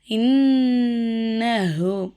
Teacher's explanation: புரியுதுங்களாமா அடுத்து பாருங்க இன்னஹு இங்க நம்ம ஏன் இப்படி அழுத்துறோம் சொல்லுங்க ஏன்னா நூனுக்கு சத்து வச்சிருக்காங்க அதனால நம்ம என்ன செய்றோம் சத்து செய்யப்பட்ட நூனையும் சத்து செய்யப்பட்ட மீமையும் மட்டும் நல்லா நம்ம அழுத்தி உச்சரிக்கணும்